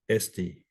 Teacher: Again, smooth breathing, so no H sound.